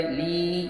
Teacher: یا مدہ ہوا، ایک الف برابر کھینچ کر پڑھیں گے۔